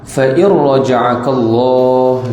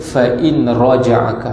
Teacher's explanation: Fa in raja'akallah, nun mati bertemu dengan ra, hukumnya idgham bila gunnah, iaitu kita masukkan nun tu ke dalam ra, tak ada lagi bunyi nun